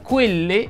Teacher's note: la E mi raccomando va pronunciata chiusa